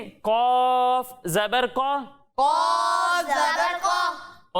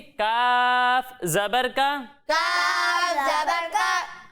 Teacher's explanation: जब हम कौफ की अदायगी करेंगे तो इसे मोटा करके पढ़ेंगे क्योंकि कौफ हुरूफे मुस्तालिया में से है।